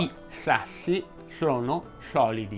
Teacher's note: il suono non è più anteriore ma diventa laterale, cioè non esce più dal davanti ma dai lati della lingua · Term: S bagnata